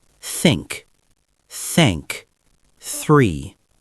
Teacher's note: For the unvoiced th, your tongue should gently touch your upper front teeth and you push air out without vibrating your vocal cords.